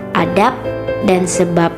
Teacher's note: Tetapi dalam kondisi tersebut fungsi pembeda antara B dan P bisa dibatal, setidak-tidaknya bermasalah karena dijumpai bunyi yang sama. Misalnya fonem B pada silaba akhir kata adab dan sebab diucapkan P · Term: netralisasi